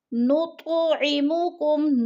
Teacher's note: تو ساکن ہے اور حروف قلقلہ میں سے ہے تو اس کو ہلا کر پڑھنا ہے۔ نطعمکم، کم پہ اظہار شفوی ہے، ادھر اخفا نہیں کرنا بلکہ ظاہر کر کے لفظ کو پڑھنا ہے۔